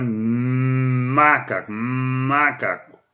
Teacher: O Me é também igualzinho ao B, só que o Me, o som sai pelo nariz · o som sai pelo nariz, então nós dizemos que ele é nasalizado